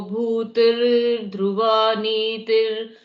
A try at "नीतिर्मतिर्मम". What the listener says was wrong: देखिए नीतिर मतिर ममा, ममा में विसर्ग लगा दिया तो विसर्ग नहीं लगाना है।